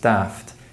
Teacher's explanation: may be pronounced Daft in accents which lack the Trap bath split such as in the north of England